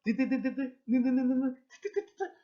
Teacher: 즉 혀 끝과 저기 윗잇몸이 막혔다 터지면서 나는 소리가 디귿계열의 소리라고 할 수 있습니다. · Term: 치조음